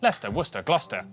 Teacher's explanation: sesta is pronounced stir